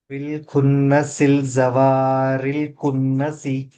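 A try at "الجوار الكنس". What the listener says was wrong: జీమ దగ్గర తప్పు చేశారు కరెక్ట్ చదవలేదు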